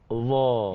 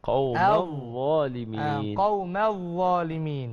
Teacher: Tapi huruf Dha ni dia tidak ada tak ada desiran angin, desiran suara, tak ada.